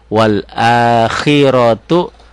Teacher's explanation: rohnya tebel, tafhim, tu-nya kosar